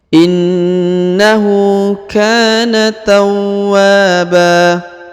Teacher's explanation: dipanjangkan dua harakat karena di depannya terdapat Alif ya tawa perhatikan huruf wa ditahan dan ditekan karena terdapat tanda tasdid lalu di depannya terdapat Alif maka dipanjangkan dua harakat